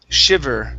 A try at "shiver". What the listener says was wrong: Okay, give me a good V. Instead of shiver, it's shiv. Shiver. Shiver.